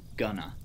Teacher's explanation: going to in its future sense is rarely pronounced as two words but rather as something more like gunner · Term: phonological reduction